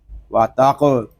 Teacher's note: رہا ہے، واو زبر وا، تا قاف زبر تاق، وا تاق، قاف حروف مستعلیہ میں سے ہے، اس کو پر پڑھیں گے، اور قاف ساکن میں کلکلہ بھی ہوگا کیونکہ قاف حروف کلکلہ میں سے ہے، وا تاق، واو کھڑا